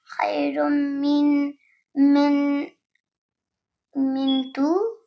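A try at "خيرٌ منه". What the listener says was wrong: The min tu would be with the two dots right here, but there's no two dots here. Khairun minhu.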